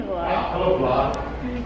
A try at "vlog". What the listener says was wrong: No, it's a vlog, not a blog. No, vlog with a V. Video blog. vlog.